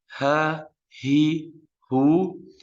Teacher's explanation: Kalau tentang harf al-ha, pita suara tetap terbuka, tidak ditahan seperti di harf al-hamzah.